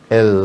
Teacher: L 설축음은 더 이 혀끝을 붙이고 양옆을 터서 공기를 뿜어내기 때문에 설축이라고 하는 겁니다.